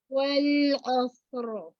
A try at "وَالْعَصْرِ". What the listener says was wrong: عین موٹا نہیں کریں گے، لام کا مخرج مکمل. والعصر، لام کا مخرج مکمل نہیں ہو رہا، پورا زبان کی نوک تک ادنا حافہ کو لگائیے. والعصر، را کو ہلائیں گے نہیں، را میں توسط. والعصر،